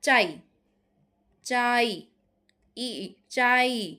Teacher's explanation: তোমরা নিশ্চয়ই বুঝতে পারছো যে আটা পুরোপুরি উচ্চারিত হচ্ছে কিন্তু ইটা অর্ধেক উচ্চারিত হচ্ছে। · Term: অর্ধ স্বরধ্বনি